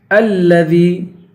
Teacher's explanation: حمزے کو لام سے ملائیں گے اور دال کو یا سے ملائیں گے. الذی، دال کو یا سے ملا کر یا کو ایک الف کی مقدار کھینچیں گے.